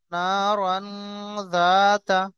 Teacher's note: এখানে তানবিনের পরে দেখেন হরুফে ইখফার 15টি অক্ষর, তার মধ্যে জাল রয়েছে, এই জাল এসছে। তো জাল আসার কারণে এই তানবিনের আওয়াজকে নাকের মধ্যে তুলে পড়বো।